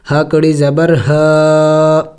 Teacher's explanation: ہا کے اوپر کڑی زبر ہے جو کہ ایک الف کے مقدار کھینچا جاتا ہے اور چھوٹا سا مد بھی ہے تو اس کو اب تھوڑا